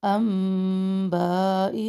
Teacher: ساکن کے بعد حمزہ اظہار کر رہے ہیں یہاں پہ، انبائی نون ساکن کے بعد با اقلاب کر رہے ہیں غنہ کے ساتھ